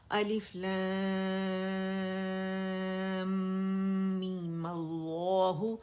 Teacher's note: جو میم کو 6 کاؤنٹ کھینچنا تھا اسے مد اصلی بنا دیا, 2 کاؤنٹ کھینچا اور کھینچتے ہی میں نے اس کے اوپر فتحہ لگا دی, می کر کے می ملہ کر دیا, می ملہ کر دی ملہ.